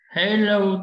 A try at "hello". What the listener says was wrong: Okay, âm hát mình đẩy hơi ra một chút nữa, âm hát phải đẩy hơi ra nào.